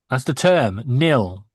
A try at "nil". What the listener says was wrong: And then sounds like you're saying nail, like a nail, like in the ground.